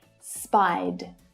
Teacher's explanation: if a regular verb ends in a vowel sound, like spy, for example, then the ed is pronounced as a d as well